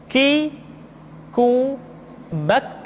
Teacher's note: Diucapkan dengan mengangkat pangkal lidah kita ke posisi di depan huruf Qaf. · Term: huruf K